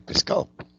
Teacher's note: Ejemplo, pescado. Se omite la D y dice pescado. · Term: Elición de la D